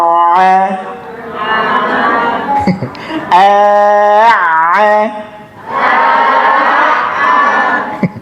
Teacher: maka Ain itu dia tertahan tapi suaranya tetap keluar